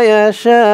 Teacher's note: এখানে শা বলে 4 আলিফ টান দিয়ে এই হামজাকে ধরবে, হামজার উপরে পেশটা সাকিন হয়ে যাবে, ইয়াশা, ফিল আরহামি কাইফা ইয়াশা।